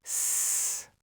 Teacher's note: You don't try to say the whole cluster at once. You start the S sound early, and you hold it for a second to let your mouth prepare for the next consonant. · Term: S clusters